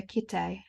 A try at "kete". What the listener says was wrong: It's an e word. It's an e. No, it's like Kete.